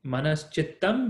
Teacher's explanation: notice that we have chakara following, so that becomes shakara in between.